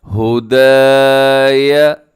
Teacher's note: دال کے ساتھ الف ہے تو دال کو آپ نے کھینچنا ہے